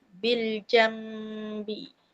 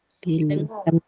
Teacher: >> Jadi itu dia panggil ikhlab. Kita tukar bunyi nun mati kepada bunyi mim.